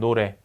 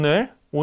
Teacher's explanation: 혀의 뒷부분을 우보다 내린 상태에서 입술을 오므리고 앞으로 내밀면서 발음한다. 그러면 네, 오가 됩니다. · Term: 후설 원순 중고모음